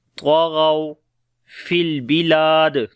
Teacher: یہاں پر واو لین ہے، نرم پڑھیں گے، طَغَوْا فِي الْبِلَادِ، لام کو لمبا کریں گے، الف مدہ ہے، اور دال کے اوپر پھر قلقلہ کریں گے